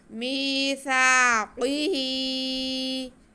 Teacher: मीम को, सा को, हा को, तीनों को खींचना, सिर्फ दरमियान में क़ाफ़ है उसे नहीं खींचना। मीसाक़िही, सा की आवाज़ बहुत नरमी से पढ़ेंगे, सा में सीटी की आवाज़ नहीं आती।